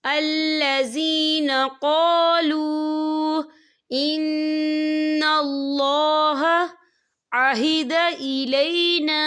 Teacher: ساکن سے پہلے پیش ہے اور اس پر چھوٹی سی مد بھی ہے، تو ہم اسے 3 یا 4 حرکت کے برابر کھینچ کے پڑھیں گے۔